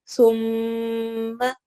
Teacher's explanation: یہ جب بھی نون اور میم کے اوپر آتا ہے تو ہم غنہ کر کے پڑھتے ہیں، یعنی ناک میں آواز جاتی ہے اور لمبا ہوتا ہے